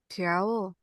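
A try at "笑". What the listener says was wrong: Nadanya harus ke bawah sedikit. Nada 4.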